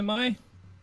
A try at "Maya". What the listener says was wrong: You're missing a vowel, but yes, I know who she is.